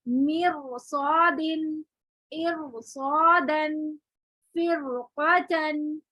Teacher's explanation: را ساکن ما قبل کسرہ ما بعد حروف مستعلیہ ہو تو را ساکن موٹا ہی رہے گا